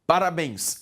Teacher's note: a última é a tônica, oxítona